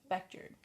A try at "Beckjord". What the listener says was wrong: It's probably Beckard, and the J is a silent. Yeah, it's probably Beckard.